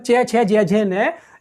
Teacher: हम उच्चारित करेंगे, यानी च वर्ग च छ ज झ न, इनको उच्चारण करते हुए हमारी जीभ अगले वाले भाग यानी तालु से टच करती है